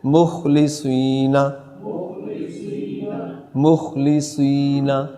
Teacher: مخلصین میں صاد کو پر کریں گے. مخلصین، یہ سین نہ پڑھی جائے، صاد کی صفت واضح ہو.